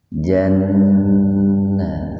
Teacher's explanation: nun bertasdid itu guna, tahan dua ketukan biar nampak mendengung